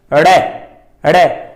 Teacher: इक्को दम फटके नाल जीभ थल्ले आके अपनी मूल अवस्था ते आउंदी है। सो इसलिए इसनूं फटकवां व्यंजन भी आखदे हां। · साडी जीभ पुट्ठी हो रही है, फोल्ड होके ओही मुर्दा वाली थां ते लग रही है ते वापस मूल अवस्था ते आउण ते ही राड़े दा उच्चारण हुंदा है।